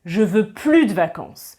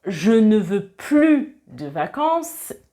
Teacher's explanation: je ne prononce pas le S du plus quand c'est dans un sens négatif. Ici, c'est assez clair parce que j'ai dit « je ne veux plus de vacances », donc on comprend que c'est négatif.